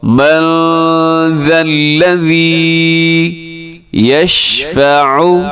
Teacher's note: یہاں نون ساکن کے بعد ذال ہے تو یہاں اخفا کریں گے